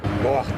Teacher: dentro ela tenta ficar é é mais uma retro reflexão entendi o movimento da língua é quase que enrolado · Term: r caipira